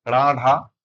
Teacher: तो आपके जो जीभ है इसका आगे का हिस्सा हल्का सा मुड़, इसीलिए इसको मूर्धन्य व्यंजन कहते हैं।